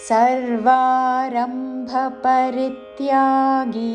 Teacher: రీ మీద ఆఘాతతో పరిత్యాగి చివరిలో గీ దీర్ఘము.